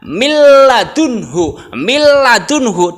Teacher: dimasukkan betul, nunnya hilang. Langsung ke huruf lamnya.